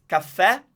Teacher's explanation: it's stressed at the end, and it's an open E